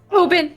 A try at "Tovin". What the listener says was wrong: No, it's Tovin with a V.